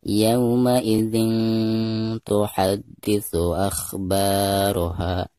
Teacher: Maka cara membaca tanwin yang ada di bawah zal tersebut itu harus disamarkan disertai dengan dengung karena bacaan di sini dihukumi ikhfa ya. Jadi suara tanwinnya itu harus didengungkan ya, atau disamarkan disertai dengan dengung